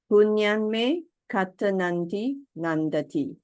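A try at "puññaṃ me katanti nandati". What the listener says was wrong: There's no A after N. Katanti. Because there is an I. This I is contracted. You can see with this apostrophes actually. Punyam me katang iti nandati.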